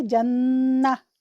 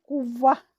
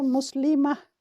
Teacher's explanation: گول تا وقف کی صورت میں ہائے ساکنہ میں تبدیل ہو جاتی ہے، قطع نظر اس کے کہ کون سی حرکت ہے۔